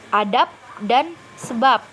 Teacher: akhirannya berupa B tetapi diucapkan seperti berakhiran p hal ini terjadi karena hambat karena hambat letup bersuara B itu · pada kata adab dan sebab ini akhirannya berupa B tetapi diucapkan seperti berakhiran P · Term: netralisasi, Netralisasi